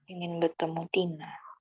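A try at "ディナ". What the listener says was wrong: Dina ya, ada teng-tengnya kan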